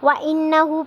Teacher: وَإِنَّهُ لِحُبِّ الْخَيْرِ لَشَدِيدٌ، وَإِنَّهُ پہ غنہ ہو رہا ہے، نون مشدد ہے، اس لیے آواز کو ناک میں تھوڑی دیر کے لیے ٹھہرانا ہے